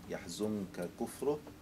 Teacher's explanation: أظهر الكاف لأن النون الساكنة التي قبلها أخفيت فيها، فانتقل مخرجها إلى الخيشوم فيصعب أو فصعب التشديد بعدها فامتنع الإدغام. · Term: النون تخفى